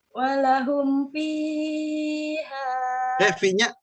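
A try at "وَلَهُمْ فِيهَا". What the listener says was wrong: Fi-nya 2 harokat saja. Fiha.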